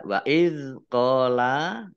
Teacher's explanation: Baik, kita lihat wa iz qala, ya ingat zal sukun bukan kolkolah, jangan dipantulkan